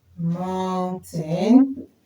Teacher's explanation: We stress them and they are two syllable nouns. We stress them on the first syllable. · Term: stress the first syllable